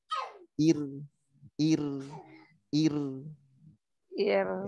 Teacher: Nah, sekarang yang sebelumnya kasroh. Yang sebelumnya kasroh, ro-nya ini tipis. Ya, ro-nya tipis. Ya, jadi lidahnya rileks di bawah.